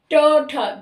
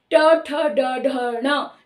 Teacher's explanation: वर्ग को हम मूर्धा से बोलते हैं, यानी ट ठ, दांतों को छू नहीं रहा ना ही तालु को। ट ठ ड ढ ण, ये जो है ये मूर्धा उच्चारण है।